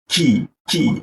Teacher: Jadi ada hembusannya jika kita ee tangan kita letakkan di ee depan mulut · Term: hembusan udaranya